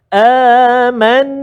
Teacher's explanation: nun atau mim yang bersabdu. Maka kita kena baca dengan dengung dua harakat, tak boleh cepat dekat situ. Bacaan dia amanna. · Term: wajibal gunnah